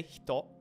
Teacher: you should only feel your voice vibrate your throat vibrate when you're at the oh